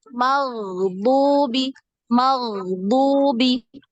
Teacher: Nah, udaranya dikurangi karena dia tertahan, untuk huruf ghain ini tertahan ya, aliran udaranya ya atau nafas itu dia tertahan, tidak seperti huruf kho ya banyak. Jadi ada kayak ngoroknya kho gitu ya.